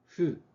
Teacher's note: The fu is somewhere between an F and an H.